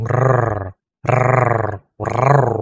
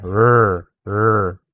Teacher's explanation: Pagdating sa r sound, medyo malakas ang r sound ng mga Pilipino eh. Ito yung tinatawag na rolling r, yung r, r, r, okay.